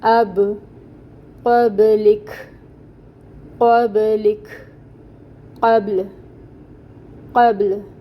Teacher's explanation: آواز کو دبانا نہیں ہے۔ اب، اب ہونٹوں کو کھول دیں گے با پہ تو پھر قلقلہ ادا ہو جائے گا